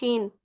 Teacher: it is pronounced when the middle part of your tongue touches the upper palate.